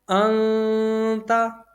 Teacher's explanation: تا حرف اخفا میں سے ہے، تو یہاں پر غنہ ہوگا